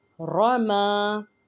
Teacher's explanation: यहाँ पे रॉ के ऊपर ज़बर है तो रॉ को मोटा पढ़ेंगे